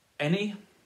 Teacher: any has to be stressed on the first syllable